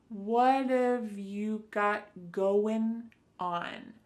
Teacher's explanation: So what and have are going to be pushed together.